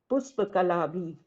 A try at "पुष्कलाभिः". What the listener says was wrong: पुष्क पुष्क कला भी नहीं, पुष्क लाभि।